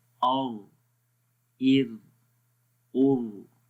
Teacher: first اور last میں را موٹا پڑھیں گے اور مڈل میں را کو باریک پڑھیں گے